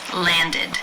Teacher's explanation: past tense of this regular verb is landed, id, with the I as in sit and the D sound.